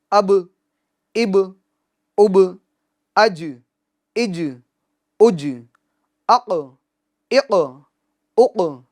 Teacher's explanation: قلقلہ meanings ان کے مخرج میں آواز لوٹے گی، ان کے مخرج میں آواز جنبش کرے گی، حرکت کرے گی، جس کی وجہ سے آواز لوٹتی ہوئی محسوس ہوگی